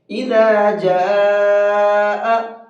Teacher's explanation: یہ الف کے اوپر بڑا مد ہے، اور یہ بڑا مد 4 سے 5 الف کی برابر کھینچ کر کے پڑھا جاتا ہے